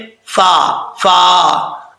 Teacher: اوپر والے جو دو دانت ہیں ان کا کنارہ نیچے والے ہونٹ کی تری والی جگہ پہ لگے تو فا پڑھا جاتا ہے